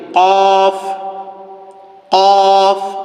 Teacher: কফ উচ্চারণ করার সময় কণ্ঠনালীর মধ্য থেকে এই কফটি আমাদেরকে উচ্চারণ করতে হবে। যেমনটি আমি বলছি কফ, কফ, ভিতর থেকে আওয়াজটি বের করবেন।